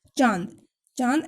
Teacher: अनुनासिक, अनुनासिक है चांद, चांद ऐसे लगता है चंद्र बिंदु की तरह। नाक और मुंह दोनों से उच्चारण किया जाता है, इसलिए इसको अनुनासिक बोलते हैं।